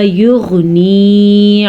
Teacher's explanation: یغنی میں غین کے مخرج کا دھیان رکھنا ہے، غین کو پر پڑھنا ہے کیونکہ غین جو ہے وہ حروف مستعلیہ میں شامل ہے